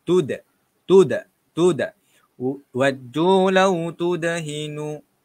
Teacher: Dal dekat sini tuan-puan. Dal kena qalqalah. Kena lantunkan tuan-puan.